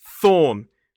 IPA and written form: θɔːn (thorn)